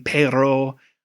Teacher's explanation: Spanish speakers will tap or roll the tip of their tongue to the alvolar ridge, which is like right behind your teeth. And that that's the difference between like rolling your R as in pero or just saying pero.